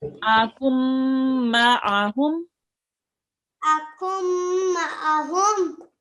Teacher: Okay, which means we are completely ignoring the noon. Okay, we are not reading the noon because after the noon sakin, there follows a letter with the tashdid.